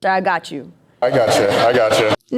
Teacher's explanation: The word got typically receives the most stress, the primary stress with secondary stress on I.